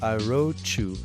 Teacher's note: Why? Because in the word wrote, we have T at the end and we have you starting with Y. So here you can make a liaison, and that is the ch sound